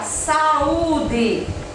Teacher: O hiato são também palavras que têm o encontro de vogais, só que falamos em sílabas separadas, como na palavra saúde.